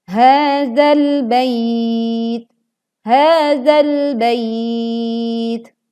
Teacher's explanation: karena kuatnya tekanan maka keluarlah angin saat tak sukun dibacakan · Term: sifat Hamas